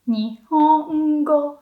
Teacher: So when talking about Japanese language, you stay high. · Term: heibangata